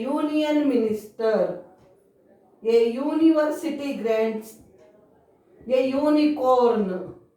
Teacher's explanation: Though it is started with vowel letter, it has ya sound, not a sound. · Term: y sound